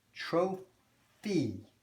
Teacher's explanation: that Y is sounding like a long E at the end